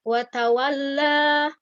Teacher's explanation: pada huruf lam yang bertasydid ini jangan terlalu ditekan ya. Jangan seperti ini watawalla ya, jangan seperti itu karena huruf lam ini lembut ya. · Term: lam bertasydid